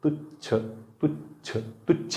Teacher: तुच्छ तुच्छ तुच्छ म्हणताना जिभेचा शेंडा समोर येतो. छ छ छ तुच्छ तुच्छ.